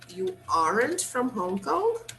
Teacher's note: he's just expressing surprise so he is just using the negative with the question intonation